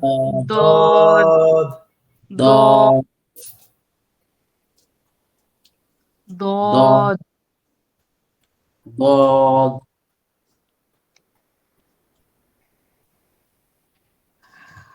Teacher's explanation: জিহ্বার গোড়ার কিনারা উপরের মাড়ির দাঁতের গোড়ার সঙ্গে লাগাইয়া দদ উচ্চারিত হয়।